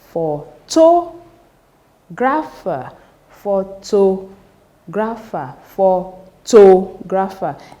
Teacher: the third syllable from the end, that is antepenultimate syllable, should receive the stress for words that ends with ER